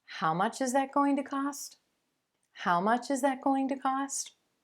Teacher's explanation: notice that the question word here is also emphasized when you're seeking that repetition